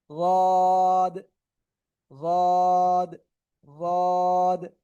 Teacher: জিব্বার গোড়ার কিনারা ডান পাশ বা বাম পাশ যে কোনো পাশ হোক, উপরে মাড়ির দাঁতের গোড়ার সাথে লাগাবেন। লাগিয়ে আপনাকে এটা উচ্চারণ করতে হবে।